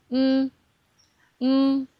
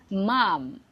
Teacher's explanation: when you pronounce M, the air doesn't comes out from your mouth. Actually, it comes from your nose. M. It's similar to English M sound.